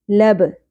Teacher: با ساکن پہ قلقلہ ہوگا